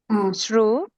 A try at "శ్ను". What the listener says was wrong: ఇదిష్ను అండి.ష్ను,ష్నం. రావత్తు లేదు ఇందులో.